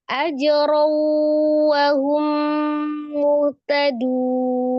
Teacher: Cuman kurang sedikit gunnahnya lagi. Ya, di wawnya sama di mimnya.